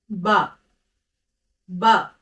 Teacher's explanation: pronounced from the wet part of the lips pressing the lips together and releasing them